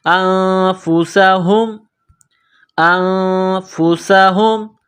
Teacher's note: سیٹی کی آواز پیدا کریں گے، سین کو پتلا کریں گے، یہ گول ہا ہے چشمے والی، منہ سے ہوا نکالنے کی طرح صرف اس ہا کو پڑھتے ہیں · ہے، نون ساکن کے بعد فا ہے، حروف اخفا ہے تو نون ساکن پر غنہ کریں گے، آواز ناک میں چھپائیں گے · نون ساکن پر غنہ کریں گے، آواز ناک میں چھپائیں گے، سین میں سیٹی کی آواز پیدا کریں گے، سین کو پتلا کریں گے